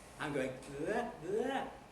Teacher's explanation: it is on a high pitch at the beginning and it is rising a bit at the beginning